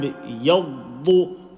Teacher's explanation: And you will say the Dad full mouth.